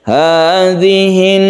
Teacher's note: Hadhihin naru idgham syamsiyah, karena al bertemu dengan nun maka membentuk tasydid nun, sehingga tasydid nun ini kita tahu setiap nun yang bertasydid ini dibaca gunnah, maka kita baca gunnah atau kita tahan ketika kita membaca tasydid nun. Hadhihin, jadi kita tahan seperti itu membacanya.